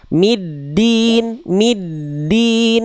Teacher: Dal jangan jadi ta